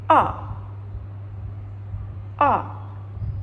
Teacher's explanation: open your mouth wide. The tongue is low and toward the back.